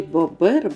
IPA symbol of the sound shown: б